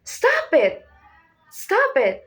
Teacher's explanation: Start medium. Go higher fast then drop sharply. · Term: Rising then falling